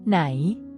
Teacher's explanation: pronounced with a high tone it starts at a higher pitch and maintains this elevated pitch level distinguishing it from the midtone